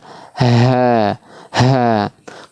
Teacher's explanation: Kalau H besar, ha. Kalau H besar dia ciri khasnya itu udara yang keluar lebih banyak ya. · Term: ha besar